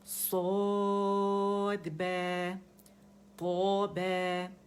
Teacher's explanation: اس میں آواز کیا ہوتی ہے کہ وہ ایکو ہوتی ہے, اسے ہم اوپر کی طرف پھینکتے ہیں تالو کی طرف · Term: اطباق